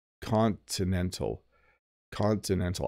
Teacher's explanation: I heard people don't really pronounce the letter T Continental Continental I don't turn my te's into D's with Continental · I don't turn my T's into D's with continental. · I'm definitely hitting the T's and pronouncing the T's with continental.